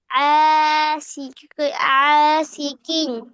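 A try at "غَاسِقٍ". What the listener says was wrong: না, গ, গ, গয় মত।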